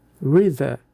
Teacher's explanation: Note o som do e a longo e tenso em read. O segredo está no linking sound entre o d de read e o th de the. Read the. A língua deve deslizar rapidamente dos dentes superiores para a posição interdental. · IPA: /riːd-ðə/